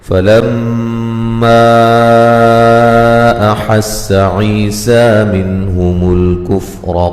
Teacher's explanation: میم مشدد پہ غنہ ضروری ہے